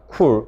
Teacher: 쿨 같은 경우도 뒤에 모음 우에 영향받아서 자음 크가 입술이 둥그런 K 발음이 된다. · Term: 립 라운딩